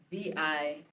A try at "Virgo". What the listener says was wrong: V-I-R. You said Vigro.